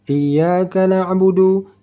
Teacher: Kesalahan yang kita dengar orang membacanya, ya ini tidak ditekankan di tasydidnya.